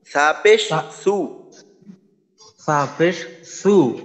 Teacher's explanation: জিহ্বাটা কিন্তু দাঁতের আগার সাথে লাগাইতে হবে উপরের দাঁতের আগার সাথে